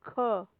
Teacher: The back of the tongue is against the soft palate.